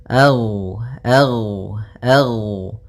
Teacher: ghain termasuk salah satu sifat huruf yang dia adalah sifat rakhawah yang di mana suaranya mengalir